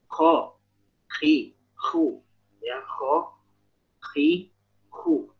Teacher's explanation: Untuk huruf Kha dia mengorok ya, tapi jangan berlebihan.